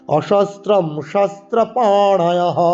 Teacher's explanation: পাতে দীর্ঘস্বর, ন মূর্ধন্য উচ্চারণ করবো আমরা